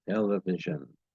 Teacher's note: Her voice drops in pitch and volume. This S changes to a Z sound, and the vowels I and O disappear between the S and the N.